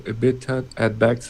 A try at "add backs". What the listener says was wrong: Add backs, I would stress add instead of backs, add backs.